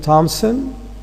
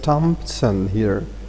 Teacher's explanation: P can be also inserted between m and s. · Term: epenthesis